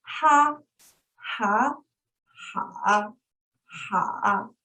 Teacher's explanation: Okay, number 3 is the rising falling tone. We start at the middle range, dip slow, and ends middle range.